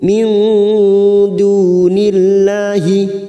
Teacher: nun sukun bertemu dal ikfa hakiki, kita samarkan 3 ketuk